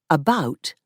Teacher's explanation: the pronunciation of ow, which Canadians pronounce as o in some words, so the word about sounds like a boat